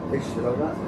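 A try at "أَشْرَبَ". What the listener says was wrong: Ash, not Ishraba. Ash. We have to put a fatha on the hamza. Ashraba.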